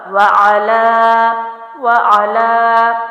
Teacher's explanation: عین کو بھی جلدی چھوڑا، لام کو میں نے ایک الف لمبا کیا۔